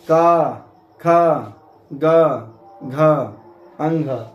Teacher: इनका उच्चारण स्थान कंठ है इसलिए इसको कंठ्य वर्ण कहते हैं